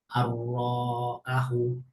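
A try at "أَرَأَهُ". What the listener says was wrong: রতে টান নেই, আতে টান আছে, হ্যাঁ? আর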